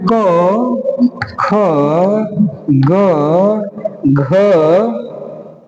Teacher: इनका उच्चारण स्थान कंठ से होता है